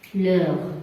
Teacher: Je répète, muet, c'est-à-dire on ne peut pas la prononcer. H muet, c'est H qui ne se prononce pas.